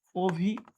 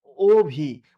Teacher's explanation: আর অটা যদি ও এর মত উচ্চারণ হয় তবে তাকে আমরা কি বলি? সংবৃত উচ্চারণ।